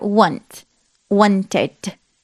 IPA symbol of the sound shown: ɪd